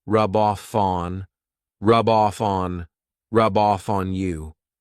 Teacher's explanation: So I'm saying those 3 words as one rub off fawn. So here I'm taking the F from off and I'm adding it to on